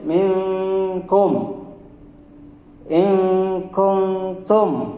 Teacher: kalau ini info Hakiki tidak dibaca masuk tapi dibaca samar jadi antara masuk dan tidak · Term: ikhfa Haqiqi